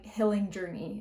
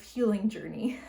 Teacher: is changing the way that she pronounces this e so that it sounds more like I